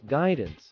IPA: ˈɡaɪdəns